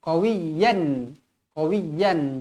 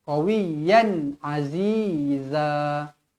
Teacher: tanwin yang selari bertemu huruf ain. Hukum dia dekat sini izhar halqi, dibaca jelas dan terang. Qawiyan. Qawiyan, jangan dengungkan.